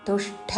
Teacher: అల్పప్రాణ ట వత్తు తుష్ట అని మహాప్రాణ అక్షరము పలకకూడదు